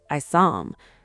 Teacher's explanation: The h just vanishes because it's a weak sound surrounded by stronger sounds. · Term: dropped H